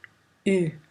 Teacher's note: La voyelle U est une voyelle antérieure, fermée et arrondie.